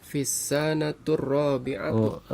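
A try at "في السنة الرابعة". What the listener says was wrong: sa-nya pendek ya. Fissanati. Ada huruf fi ya, maka menjadi kasrah. Fissanati tadinya kan as-sanatu menjadi fissanati, kemudian kita tambahkan al-adad at-tartibi menjadi fissanatir rabi'ati ya, fissanatir rabi'ati ya. Al-adad at-tartibinya juga berubah menjadi kasrah, Pertama menjadi muannas, kemudian juga dia dijadikan kasrah ya.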